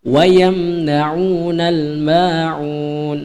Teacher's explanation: wa yamna'u mim mati bertemu dengan huruf nun itu dibaca jelas, ya, jangan dibaca dengung. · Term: izhar syafawi